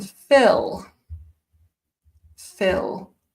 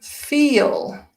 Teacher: Phill short I feel long e